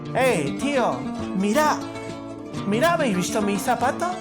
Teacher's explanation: Pero no existe el sonido de la Z, lo hablamos como la S. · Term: ceseo